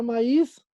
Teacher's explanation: Maíz es una palabra aguda. Y es una palabra aguda porque su sílaba tónica está en la última posición. Y cuando decimos que está en la última posición, quiere decir que la sílaba tónica está al final.